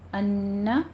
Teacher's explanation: نون مشدد ہے، یہاں پہ ہم غنہ کریں گے، 2 کاؤنٹ کریں گے